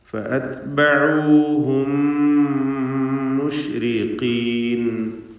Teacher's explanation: 2 മീമുകളെയും ഒന്നാക്കി ഇദ്ഗാം ചെയ്ത് ഇദ്ഗാം ഷഫഈ നൽകി ഷദ്ദുള്ള ഒറ്റ മീമും മാത്രം ഉച്ചരിക്കണം. മണിച്ചുകൊണ്ട് ഉച്ചരിക്കുക.